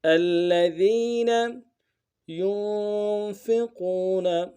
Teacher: یا کو نون ساکن کے ساتھ ملانا ہے، نون ساکن میں اخفا ہوگا